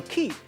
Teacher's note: 另外，“纪”也佫有一个音，就是加送气音，咱读做“起”